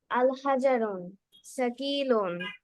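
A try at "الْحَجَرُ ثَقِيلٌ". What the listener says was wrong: হাজার রুন হবে না, বিকজ আলিফ লাম যদি আসে ফার্স্টে, তখন ওই ওয়ার্ডের লাস্টে আর তানবিন দেওয়া যায় না, এক পেশ হবে। আল হাজারু।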